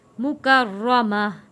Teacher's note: وقف میں گولتا ہا میں تبدیل ہو جائے گا